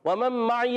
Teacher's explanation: عین کو حلق کے درمیان والے حصے سے ادا کریں گے، حرکات کو بغیر کھینچے ادا کریں گے.